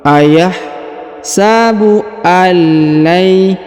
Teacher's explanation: huruf nun sukun bertemu dengan lam bertasdid, maka nun sukunnya menghilang melebur ke lam dan huruf lamnya ditahan dan ditekan